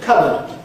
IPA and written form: ˋkʌbəd (cupboard)